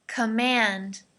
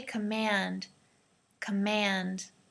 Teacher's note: So the second syllable, mand, is emphasized